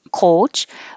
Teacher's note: So I'm using the OU to remind you that it's not just a pure O, coach, but O. It starts lower and then moves up to U. But I would actually use a schwa because you're starting more with an O, O.